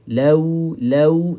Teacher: So kena guna bunyi u kat belakang dia. Bukan bunyi o eh. Bukan bunyi o. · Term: wau lin